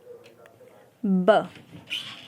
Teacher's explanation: ब का उच्चारण स्थान ओष्ठ है